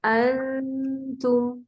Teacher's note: نون کی آواز کو ناک میں چھپا کر دوسرے حرف کے قریب المخرج اخفا کریں گے. اس صورت میں نون کا صرف غنہ ادا ہوگا اور مخرج اگلے حرف کا لیا جائے گا. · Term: اخفا حقیقی